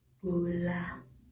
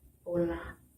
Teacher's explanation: Yang pertama konsonan B dan P adalah konsonan hambat bilabial. Konsonan ini dihasilkan dengan mengatupkan bibir atas dan bibir bawah rapat-rapat.